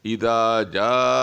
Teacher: مد متصل اسے بولا جاتا ہے جس حروف مدے کے بعد حمزہ اسی کلمے میں ہو تو اس کو مد متصل بولا جاتا ہے، اور اس کو 4 الف کے برابر یعنی 4 سیکنڈ تک کھینچا جائے گا